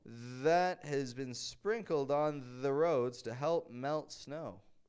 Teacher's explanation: I sounded a little funny there it's because I'm really stretching out those th's